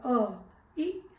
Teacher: जिसके उच्चारण में केवल एक मात्रा का समय लगता है अर्थात मुंह कम खुलता है उसे हम रस्व स्वर कहते हैं बोलकर देखेंगे तो पता लगेगा